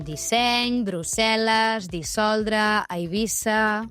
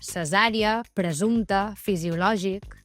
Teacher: Amb S sorda tenim disseny, Brussel·les, dissoldre, Eivissa... En canvi, amb S sonora tenim cesària, presumpte, fisiològic